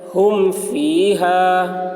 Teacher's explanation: ہم فیہا، ہا میم پیش ہم، فا یا زیر فی، ہا الف زبر ہا، فیہا، ہم فیہا۔ میم ساکن کے بعد با اور میم کے علاوہ حرف آ رہا ہے، اس لیے میم کو ظاہر کر کے پڑھیں گے، اس کو اظہار شفوی کہتے ہیں۔